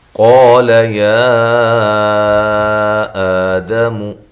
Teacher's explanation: قاف موٹا ہے، الف مدہ ہے، لام کو باریک پڑھنا ہے، لمبا نہیں کرنا۔ یا پہ جو مد ہے یہ مد جائز ہے، یہ مد جائز ہے۔